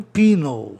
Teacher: A tendência do E é soar I, viu? Penal, assim como herói, hero.